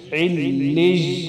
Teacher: عین کو لام کے ساتھ سختی سے ملانا، لام پر شد